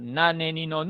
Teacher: Decíamos que la N era nasal, y era alveolar